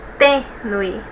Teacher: Deixa eu pegar minha canetinha aqui e vamos separar aqui, ó. Tênue, nós temos 2 sílabas e a penúltima é a mais forte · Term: paroxítona